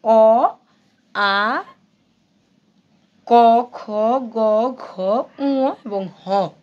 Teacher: যেমন কন্ঠ বা জিহ্বা মূলীয়। অ আ এগুলো হচ্ছে কন্ঠ থেকে বা জিব্বা মূল থেকে উচ্চারণ হয়।